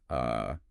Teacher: It's just a completely relaxed, neutral, unstressed uh sound. >> The jaw is barely open, the tongue is dead center doing absolutely no work. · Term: schwa